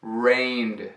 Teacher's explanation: No passado, quando colocar o ED, torna-se rained. Uma sílaba só, mas agora com o som do D aglutinado